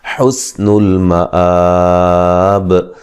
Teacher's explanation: سین کو باریک سیٹی سے ادا کریں گے